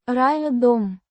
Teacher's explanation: with a soft r and a slightly stressed ah sound in. ryah.